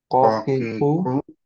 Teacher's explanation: সো এই জায়গায় যাতে আমরা টাচ না করি। ওকে, হার্ড প্যালেটে না, সফট প্যালেটে টাচ করব টানটা উপরের দিকে থাকবে